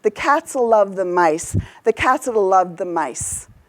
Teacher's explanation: I swallow the grammar words, I really emphasize the content words